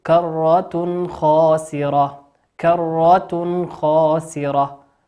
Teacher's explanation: وقوله سبحانه وتعالى كرة خاسرة، أن التنوين أتى بعد حرف الخاء، الخاء من حروف الإظهار وليس من حروف الإخفاء، ولكن نظهره